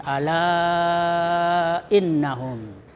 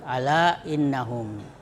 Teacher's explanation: lebih baik dipanjangkan seperti panjangnya mad wajib muttasil, yaitu 2,5 alif atau 5 harakat. Tetapi boleh dipanjangkan seperti panjangnya mad tabi'i, hanya 1 alif atau 2 harakat. Jadi lebih utama itu dipanjangkan seperti mad wajib muttasil ala innahum. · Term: mad jaiz munfasil